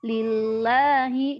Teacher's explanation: ketika didahului dengan harakat kasrah maka dibaca tipis